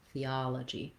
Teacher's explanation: it falls on the ah syllable, theology. So this letter O says vowel ah.